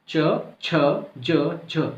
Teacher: जो वायु है वो जो है रगड़ खा के निकल रही है ना, इसलिए स्पर्श संघर्षी हो गए।